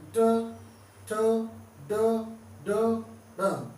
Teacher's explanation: दंत के पीछे और तालु के आगे होता है एक स्थान मूर्धा। हमारी जीव हर बार उसी मूर्धा पे टकराएगी, ट ठ ड ड ड।